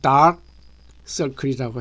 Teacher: 요즘 많이 사용되는 단어 속에 다크서클이라고 발음하는 말이 있습니다. 이 두 단어 속에는 앞단어 끝에 크라는 폐쇄 파열음이 들어있고 뒷단어 처음에 자음이 들어있습니다. 그러므로 다크서클이 아니라 dark 서클이라고 해야 됩니다.